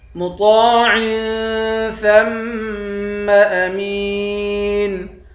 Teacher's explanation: ثا کو میم کے ساتھ ملا کر میم پر غنہ کریں گے۔ میم کو یا کے ساتھ ملا کر یا کو ایک الف کے مقدار کھینچ کر پڑھیں گے، آخر میں نون ساکن ہے۔ · مطاع، طا کو ایک الف کے مقدار کھینچ کر پڑھیں گے، طا کو موٹا پڑھیں گے۔ عین کے نیچے دو زیر ہے، یہاں پر اخفا کریں گے۔ ثا کو میم کے ساتھ ملا کر میم پر غنہ کریں گے۔